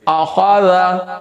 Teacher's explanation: تینوں کا وزن برابر رہنا چاہیے، یہ نہیں کہ کسی کو زیادہ لمبا کسی کو کم، چونکہ تینوں زبر والے ہیں، حرکت والے ہیں، تینوں کا لیول ایک ہونا چاہیے۔